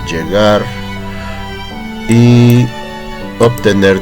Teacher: Llegar y obtener terminan en R ambas, así que la sílaba tónica es la última, respectivamente gar y ner.